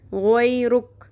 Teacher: یہاں پہ ہم جب وقف کریں گے تو کیسے پڑھیں گے غویرک کاف ساکن ہو جائے گا